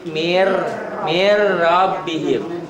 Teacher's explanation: Kalau laten, dibacanya n-nya hilang tuh. Jadi mir rabbihim. N-nya masuk ke ro, melebur, diidghamkan. Tanpa gunnah, bila gunnah.